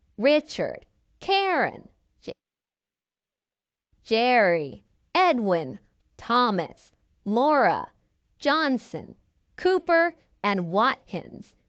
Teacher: they stress the first syllable loudest and longest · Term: primary stress